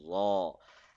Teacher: Tip of the tongue will be touching at the back side of the upper front teeth and it has an aw sound in it. It should be soft.